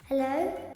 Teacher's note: And that O sounds rather British to me as well at the end.